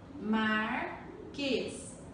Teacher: Qual é a sílaba tônica de Marquês? É o quês.